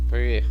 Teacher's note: Você tem que falar pé. Então ele tem que ser aberto